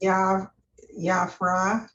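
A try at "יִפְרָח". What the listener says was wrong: No, it's ye. I'm sorry, ye. Ye.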